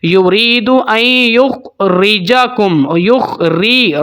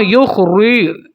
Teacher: را کو بالکل باریک پڑھیں گے کیونکہ را کے نیچے زیر ہے